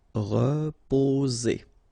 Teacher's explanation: So here, vowel and vowel, only one S, it's Z